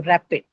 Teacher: first syllable, it is ra, right? That is what is going to carry the stress.